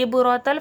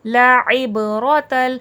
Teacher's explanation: عین حرف حلقی کا ہے اور حلق کے درمیانی حصے سے ادا ہوگا، وسط الحلق سے عین ادا ہوگا ، اس کو حمزہ کی طرح عبرۃ فلیٹ نہیں پڑھیے گا،